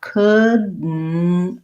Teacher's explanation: adding of, couldn't've, the T kind of just drops off. So I have couldn't've.